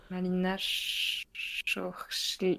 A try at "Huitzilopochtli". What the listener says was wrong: non, pas tout à fait. En fait, c'est le CH se prononce TCH. Huitzilopochtli.